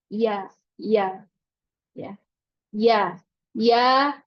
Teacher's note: lidahnya menurun ke bawah pangkal lidah pangkal lidah di sini menurun dia daerah Tengah lidah tapi dia punya jarak yang lebih jauh daripada huruf syin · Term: huruf ya